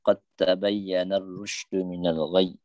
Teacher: Dal dengan ta ni makhraj yang sama, maka dia idgham